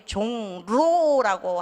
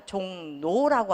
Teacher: 우리 종로라고 하지 않고 종노라고 하는 거 이런 거 다 그거는 리을의 비음화예요. 유음의 비음화예요.